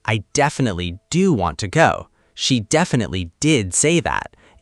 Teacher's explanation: the stress goes on definitely and the verb.